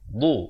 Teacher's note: makhrajnya di tepi lidah, kanan ataupun kiri.